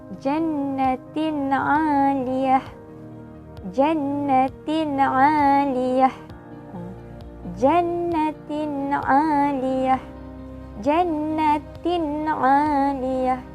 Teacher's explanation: Tanwin tu baris dua di bawah, di sebelahnya ada huruf ain. Jadi kita baca dia dengan jelas dan tanpa dengung